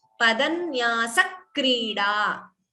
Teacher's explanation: So the N and K, the Dvitvam there, it has to be heard.